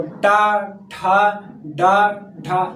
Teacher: देखो मूर्धन्य ऊपर रुक के फिर नीचे आ रहा